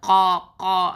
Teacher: இந்த காஃப் சொல்லும்போது நமக்கு நல்லாவே தெரியும், அந்த அதாவது என்னன்னா காக்கா சத்தம்னு சொல்லுவாங்க இல்லையா, அந்த மாதிரி இந்த கா கா அப்படின்னு சொல்லி அது கத்தும் பார்த்தீங்களா, அந்த மாதிரி சப்தத்தை நம்ம கொடுக்கணும். நாவினுடைய கடைசி பகுதி, அதாவது அது வந்து மேல் முரசோட மென்மையான பாகத்தை டச் பண்ணும் போது தான் இந்த காஃப் வந்து வெளியாகுது.